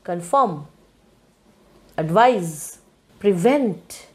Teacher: everywhere you stress the second syllable